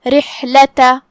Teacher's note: کلمت رحلہ میں یہاں را ہے، را کے نیچے زیر ہے، تو را کا حکم ہے ترقیق، مطلب ہم را کو ہلکی آواز میں پڑھیں گے